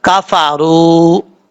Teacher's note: वाव साकिन से पहले पेश तो वाव मद्दा होता है, एक अलिफ की मिकदार लंबा करके पढ़ेंगे। जब वक्फ करेंगे तो यहाँ पे तब भी एक अलिफ की मिकदार पढ़ेंगे, वक्फ नहीं करेंगे तब भी एक अलिफ की मिकदार लंबा करके पढ़ा जाएगा।